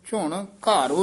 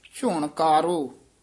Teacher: ਝੁਣਘਾਰੋ ਨਹੀਂ ਕਹਿ ਦੇਣਾ ਘਗਾ ਲਾ ਕੇ ਝੁਣਕਾਰੋ ਰਾਮ ਕਕਾ ਉਚਾਰਨ ਕਰਨਾ